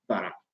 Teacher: you get no nasalization in the lenited form varak